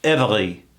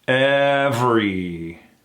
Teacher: That E, that second E, gone. Every. We go right into that VR into that E combination.